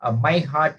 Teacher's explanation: My is not so much stressed as heart.